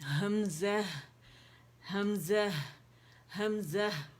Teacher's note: اقص الحلق پہ جائیں گے